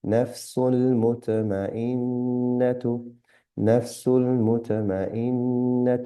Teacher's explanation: Noon with mushadda, غنة and slight nasal sound